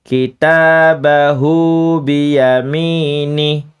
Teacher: Hu-nya cukup 2 harokat saja.